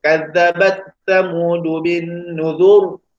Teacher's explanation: sebelum huruf ra tu adanya huruf yang berbaris di depan, jadi kena baca juga dengan tebal